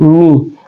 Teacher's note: Mi adalah asyafatain atau dua bibir, keluar di dua bibir kita